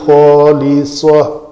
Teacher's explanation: یہ تا مربوطہ ہے، رکنا تھا یہاں پہ تو اس کو ہائے ساکنہ بنا کر روکا جائے گا